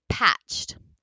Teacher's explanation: if you're ending with an unvoiced ch then your Ed will also be unvoiced